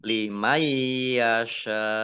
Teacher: nun sukun bertemu dengan huruf ya, bacaan idgham bi gunnah, masuk dengan mendengung, yaitu mendengung ya, ditandai dengan ya-nya ada tasdidnya.